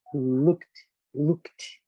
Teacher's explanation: você usa muito pouco as cordas vocais, você nem usa, quase não usa